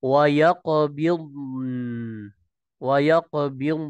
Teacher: Tidak ada pantulan pada huruf dad